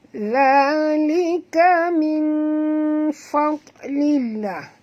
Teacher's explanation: Za 2 harakat, sentilkan lidah menyebut za, ya, kerana makhraj huruf zal ialah di hujung lidah